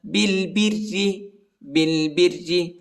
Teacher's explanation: با کو لام کے ساتھ ملائیں گے، الف نہیں پڑھا جاتا